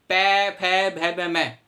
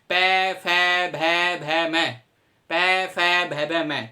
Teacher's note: बिना होठ आपस में मिले आप पै वर्ग का उच्चारण कभी नहीं कर सकते। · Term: ओस्ते व्यंजन